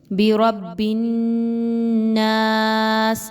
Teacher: نون مشدد ہے ناس میں تو اس کو غنہ کر کے پڑھا جائے گا